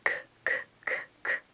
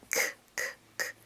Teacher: And we're going to go back to voiceless. K, k, k, k. Like cat. K, k, k. There's no vibration there.